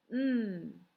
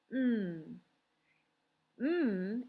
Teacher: man and i know the letter that makes the um sound my lips are together it's that nasal sound comes out my nose